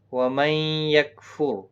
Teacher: نون ساکن کے بعد حروف یرملون کا یا ادغام مع الغنہ ہوگا